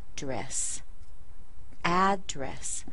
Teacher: as a noun, we're going to stress the first syllable. And you see we have two syllables here.